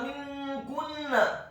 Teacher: huruf mimnya ditasydidkan, kasrah 1 harokat. Huruf nun yang sukun bertemu dengan huruf kaf yang dhammah.